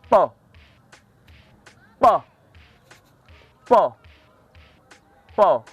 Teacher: Là, il n'y a pas eu de vibration au niveau de la corde vocale. Donc, le son P est un son non voisé.